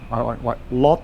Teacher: it makes an unreleased T sound